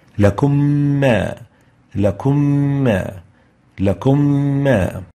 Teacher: we merge them, producing a shadda on the second meme and adding the two ghunnas together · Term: ghunnah